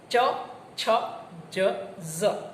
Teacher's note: જીભનો મધ્ય ભાગ કઠણ તાળવાને સ્પર્શે તો તાલવ્ય વ્યંજન.